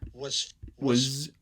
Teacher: underlyingly or phonemically this is supposed to be a voiced z but it's voiceless on the surface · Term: voiceless z